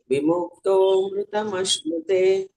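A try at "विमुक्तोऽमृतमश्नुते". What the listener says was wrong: ಸರಿ ಬಂತು ವಿಮುಕ್ತೋಲ್ ದೀರ್ಘ ಮಾಡಬೇಕು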